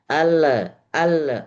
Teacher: Baik, kuncinya membaguskan bacaan atau kita baca tahsin itu jangan sampai ada huruf-huruf yang selama ini kita keliru dan keenakan membaca seperti membaca al, al. Jadi ada pantulan padahal dia bukan huruf qalqalah, bukan semestinya.